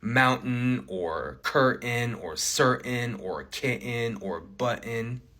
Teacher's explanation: an N sound that can form a syllable on its own, right? And when we get this T and syllabic N combo, this T often becomes glottalized, right? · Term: glottal stop